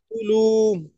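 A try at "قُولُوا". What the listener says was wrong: কুতেও টান হবে, লুতেও টান হবে, বলেন।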